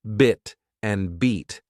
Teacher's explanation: have different vowel sounds and they're pronounced with different mouth shapes in bit the mouth is more relaxed while in beat your mouth stretches into a wider shape